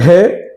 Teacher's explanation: है का उच्चारण स्थान कंठ होता है, ये कंठ से बोला जाता है